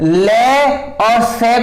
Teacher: दंत्य में आप लोगों ने देखा होगा जब आप लोग ले और से को इसे पढ़ते हैं तो आप लोग देख रहे हैं कि आप जब ले को बोल रहे हैं तो आप लोगों ने देखा कि जो आपकी जीभ है वो दांतों से टच हो रही है।